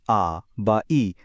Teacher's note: যখন আমরা স্বরধ্বনি উচ্চারণ করি ধরুন আ বা ই তখন ফুসফুস থেকে আসা বাতাস মুখে কোনো রকম বাধাই পায় না একদম সোজা বেরিয়ে আসে